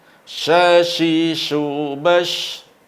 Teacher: sifat yang tidak dimiliki oleh huruf lain dari huruf shin adalah tafashi, berhamburan angin di mulut · kalau kita melafalkan huruf shin tidak perlu posisi mulut terlalu berlebihan, biasa saja, karena yang bermain di sini adalah tengah lidah, bukan di bibir.